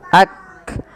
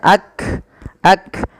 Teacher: ketika melafalkan Kaf itu yang pertama adalah sifat syiddahnya dulu tertahannya suara